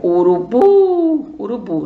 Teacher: A última também é a tônica, que é a forte. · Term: oxítona